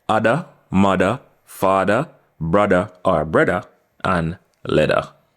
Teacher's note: Examples of the TH in the middle of the word being converted to D are other, mother, father, brother, and leather.